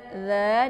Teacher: dza dibaca panjang karena ada alif di depannya yang didahului oleh fathah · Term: Mad Thabi'i